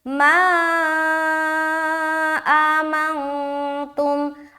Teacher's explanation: بعد ما آمنتم، ما آمنتم، ما میں مد کر رہے ہیں، حرف مد کے بعد حمزہ دوسرے کلمے میں ہے تو یہ ہو گیا مد منفصل، 3 سے 4 الف کھینچیں گے ، ما آمنتم، آ حمزہ کھڑا زبر آ، میم نون زبر